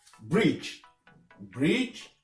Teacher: La lettre D ne se prononce pas dans certains mots comme bridge. Bridge, on ne prononce pas la lettre D dedans. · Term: silent letters